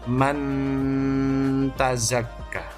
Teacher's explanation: menyamarkan bunyi nun sukun dengan ta, berarti di antara makhrajnya nun dan ta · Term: ikhfa